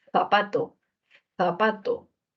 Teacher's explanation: la lengua entre los dientes y deja salir el aire zapato zapato la lengua en los dientes dentales ttt d dd